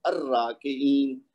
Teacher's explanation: اب را کے ساتھ جتنے بھی اسما ہوں گے ان کے ساتھ جب ہم الف لام لگائیں گے تو یہ را کے ساتھ لام کی آواز نہیں آئے گی